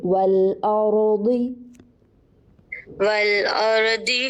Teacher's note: ضاد کو موٹا کیجیے اور را کو بھی